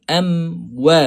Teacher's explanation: Mim kita tutup sahaja, tak perlu muncung lagi. Waw baru kita muncung. Sebab apa? Sebab waw ni walaupun mim dan waw ini dua-dua makhraj dia mulut ataupun asyafatain, walaupun dua-dua mulut, tetapi mim bila tutup dia tak muncung.